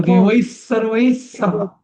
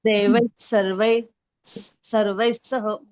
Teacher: विसर्गानंतर जर स आला तर तो विसर्ग डबल स होतो.